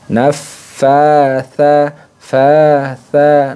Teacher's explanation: Jadi tidak boleh dibaca pendek, harus dibaca panjangnya satu alif. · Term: mad tabi'i